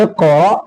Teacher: ممنون اقرأ حمزہ قاف زیر اق را حمزہ زبر را اقرا حمزہ پر جزم ہو تو حمزہ کو پڑھنے میں جھٹکا ہوتا ہے